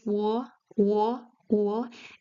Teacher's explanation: Your lips are more closed when you start the sound and then they open up. Like it's not O, but it's wo, wo, wo.